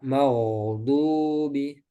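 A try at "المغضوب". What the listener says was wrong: Maghdubi. Pokoknya ditahan jangan sampai terputus kayak gini. Jadi langsung ke huruf setelahnya.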